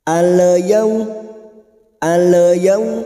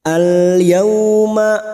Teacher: huruf lam sukun ini bukan huruf Qalqalah maka hindari pantulan cara membacanya cukup masuk tanpa memantul